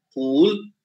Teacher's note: this pa, aspirated pa, in a stressed syllable